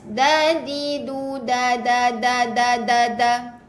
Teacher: Dan bila ngada-ngada mesti kena pada tempat dia lah. Ujung lidah kena pada akar gigi kapak atas